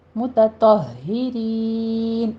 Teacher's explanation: لام کے اوپر آپ نے قلقلہ نہیں کرنا، تا کو باریک پڑھنا ہے اور تو کو پر پڑھنا ہے